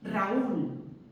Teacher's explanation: Pero, como os he dicho antes, cuando la fuerza de voz es atraída por la vocal débil, ese hecho es tan antinatural para nuestra pronunciación que lo que tenemos que hacer es marcar que la fuerza de voz está en la vocal débil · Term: hiato